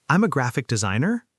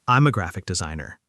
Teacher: Another thing that makes a huge difference is the pitch of your voice. Letting it go down at the end of a sentence instead of up.